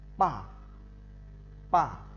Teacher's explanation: đọc từ cao xuống thấp, tức là nó đi từ bên cao ở bên trên trái xuống thấp sang bên phải. Cách đọc thanh 4 bằng cách dùng tay chém từ trên xuống và đọc giật giọng pa pa.